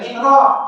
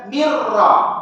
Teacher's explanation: bila nun mati dengan ra, maka ambil nun tu masuk dalam ra.